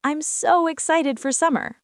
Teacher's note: >> And one more thing, intonation matters. When you're excited about summer, your voice goes up.